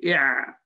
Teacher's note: Well, العين كذلك, العين, because the uvula goes to the back. When you say i'a, the uvula goes to the back, so it blocks some of the air also flowing out.